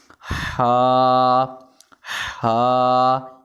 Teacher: یہ حلق کے درمیان والے حصے سے ادا ہوتا ہے